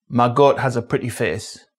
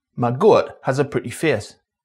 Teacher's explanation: The face and goat vowels can either be long monothongs. My goat has a pretty face or centering diff thongs.